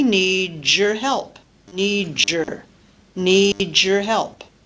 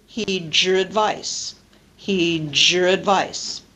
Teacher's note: these are all examples of coalescent assimilation and particularly the type of coalescent assimilation that we call palatalization